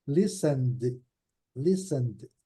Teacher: Aqui vocês observam que ainda tem um detalhe, o T também não é pronunciado.